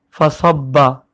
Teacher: فا زبر فا پتلا پڑھا جائے گا اور پھر صاد کو با سے ملانا ہے، با پہ تشدید ہے اور صاد کو موٹا پڑھتے ہیں۔